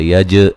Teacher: یج جیم پہ قلقلہ کریں گے